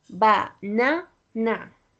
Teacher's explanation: The the first na you have to say it a little bit louder.